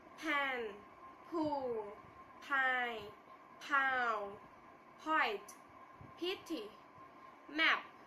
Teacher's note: P is an voiceless sound, no vibration of the vocal cord